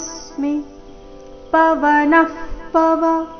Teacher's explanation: ಪವನ ನಂತರ ಬಂದಿರೋ ವಿಸರ್ಗದ ಉಚ್ಚಾರಣೆ ಅರ್ಧ ಫ ರೀತಿ